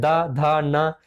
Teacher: दंत व्यंजन जो होता है वह ऊपरी दांतों के निकट से या स्पर्श से बोले जाते हैं